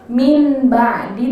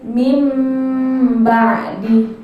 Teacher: Nah, minnya itu kan nun mati. Nah, nun mati itu kalau ketemu ba, cara bacanya bukan min ba'di tapi mim ba'di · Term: iklab